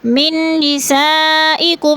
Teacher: من نسائکم، من میں نون مشدد ہے، سختی سے جمع کر پڑھیں گے۔ نساء میں مد متصل ہے، 4 الفی مد ہے، کم میں اظہار شفوی۔